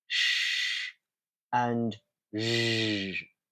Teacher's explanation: moving slightly further back to the post-alveolar section of the palate, we have sh and zh